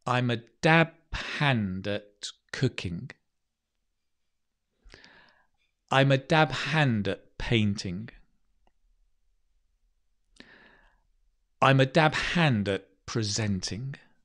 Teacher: it makes it easier if you stress the dab